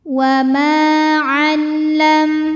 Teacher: Ma dihukumi dengan mad thobi'i dzohiri sebab ada alif didahului baris fathah. Maka huruf mim panjang dua harakat.